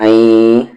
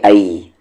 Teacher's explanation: نون ساکن کے بعد یا ہے غننے کے ساتھ، این، نہ کہ ای، ای نہیں ہوگا، این ہوگا.